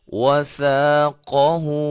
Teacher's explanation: ये सा है, इसके अंदर सीटी की आवाज नहीं पैदा होनी चाहिए।